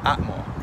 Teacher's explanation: the letter H represents a glottal stop in classical Nahuatl, but in modern Nahuatl, it might be pronounced like the English H